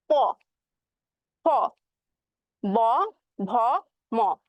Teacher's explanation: যখন আমি উচ্চারণ করতেছি তখন কিন্তু বাতাসটা বাধা পাচ্ছে হচ্ছে আমাদের ঠোঁটে, এর জন্য এই পাঁচটাকে বলা হয় হচ্ছে ওষ্ঠধ্বনি।